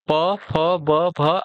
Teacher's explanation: प, फ, ब, भ आपके क्या होते हैं? ओष्ठ होते हैं।